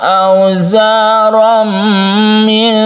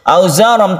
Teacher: Idgham artinya masuk, suara tanwin ini masuk ke huruf mim sehingga timbullah tasydid di sini. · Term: idgham bi gunnah